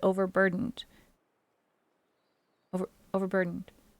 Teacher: when I said overburdened I didn't pronounce every D in the word